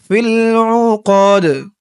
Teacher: অক্ফ করার কারণে দালের নিচে জেরটা সাকিন হয়ে গেছে দালটা কলকলার হরফ হয়ে গেছে